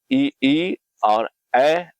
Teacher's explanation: जब हम इन्हें बोलते हैं तो हमारा जीभ का आगे का हिस्सा जो होता है वो एक्टिव होता है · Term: अग्र स्वर